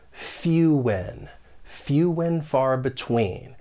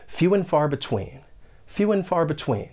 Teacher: the word and may get reduced to N. And this is common in spoken English. And keep in mind, it's also an unstressed sound, N.